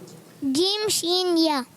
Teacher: जबान का दरमियान और तालू के दरमियान से अदा होता है। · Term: हुर्फ़े शजरिया